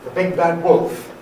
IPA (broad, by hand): the ˈbig bad ˈwolf